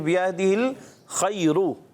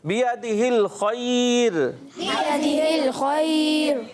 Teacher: खैर में यहाँ वफ़ करेंगे तो रा को बारीक करेंगे। जो कायदा कुलिया बनेगा ना, तो ये रा जो है या उससे पहले या सागना आ रहा है तो ये बारीक हो जाएगी। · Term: रा बारीक